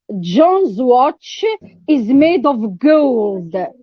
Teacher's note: emphasis is put on the word gold ah it's put emphatic stress is on the word gold so